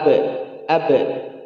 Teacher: ba asyiddah, ya, tertahan, tapi punya solusi, yaitu qalqalah